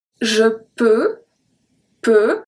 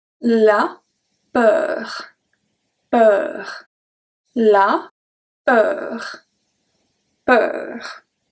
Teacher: Peu, so that's the open sound. There's nothing at the end that come and close the sound. · So when we have la peur, we have the R that come and close the sound. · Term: closed sound